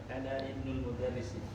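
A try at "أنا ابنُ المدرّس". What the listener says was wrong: Ya, ana disambung jadi bacanya disambung. Hamzah wasal. Iya, ana benu. Ya, Ibnu itu hamzahnya hamzah wasal, maka disambung jadi ana benu. Ya, ana benul mudarrisi.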